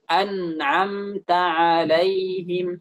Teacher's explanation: Harus disamakan. Nah, jadi kadar suaranya itu antara nun an dengan am mim yang ada di mim mati di situ kita samakan. Jangan nunnya itu lebih panjang.